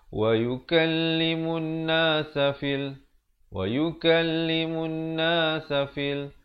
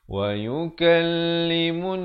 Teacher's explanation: Siapa yang baca wa yukallimun nasa fil, wa yukallimun nasa fil, salah kerana dia tak dengungkan di sini 2 harakat. Hukumnya wajib dengung kadar panjang 2 harakat. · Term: wajibul gunnah